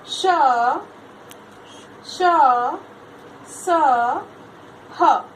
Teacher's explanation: जिनके उच्चारण में ऊष्मी आभास होता है, ऊष्मा का, गर्मी का एहसास होता है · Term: ऊष्म व्यंजन